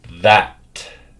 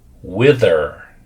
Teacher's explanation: we're going to be making a voice sound, making it with vibrations. So repeat after me. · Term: th sound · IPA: ð